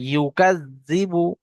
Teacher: ইউ উচ্চারণ করার সময় ঠোঁট দুটো গোল হয়ে যাবে